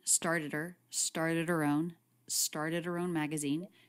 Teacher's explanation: she pronounces a light h sound even though it's unstressed